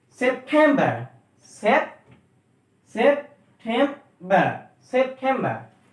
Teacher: transcription is September and stress on tem.